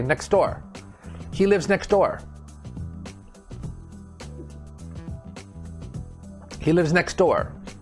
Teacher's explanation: so we drop the t sound it just sounds like next door next door next one is